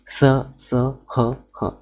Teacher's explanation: अर्थात हम कह सकते हैं कि जिन वर्णों का जब हम उच्चारण करते हैं तो उसमें जो ध्वनि है वो कैसे घर्षण के साथ में निकलती है, उनका उच्चारण हम घर्षण के साथ में करते हैं, उसे कहा जाता है उष्म व्यंजन